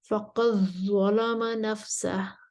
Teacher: ورش ادغام کریں گے تغلیظ کے ساتھ.